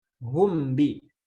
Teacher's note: Kalau diidharkan humbi. Humbi itu idhar karena memang tanpa adanya gunnah panjang